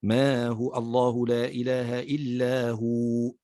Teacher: أما عند الوقف عليها فتتحول إلى واو مادية لأنها تكون ساكنة وما قبلها مضموم، فنقف عليها بالمد، مد حركتين، ما هو الله لا إله إلا هو، نقف عليها بمد حركتين لأنها تتحول هنا إلى واو مادية.